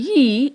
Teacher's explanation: ye is a voiced sound. It is a voiced sound. What do we mean by that? We mean that when you say ye, you feel a vibration in your throat.